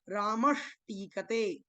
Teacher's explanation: ऐसे ही रामस और टीकते, तो टी आया है, लेकिन सा का यहाँ पर क्या हो गया, यहाँ पर सा की जगह मूर्धन्य शकार हो गया, जिसको षटकोण वाला शा बोलते हैं, तो बन गया रामश टीकते।